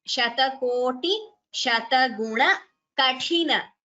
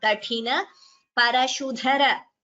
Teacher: Tha is Mahaprana. Kathina, Parashudhara. Dha is Mahaprana.